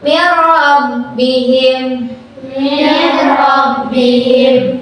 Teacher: Cara bacanya nun matinya dimasukkan ke huruf ro tanpa ditahan.